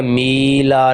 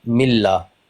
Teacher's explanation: ठीक है, मीला नहीं पढ़ना, मिल्ला। लाम को थोड़ा सा हम डबल अमाउंट में खींचेंगे।